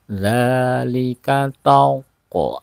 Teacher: ada qaf qalqalah ya, tauqo ada pantulan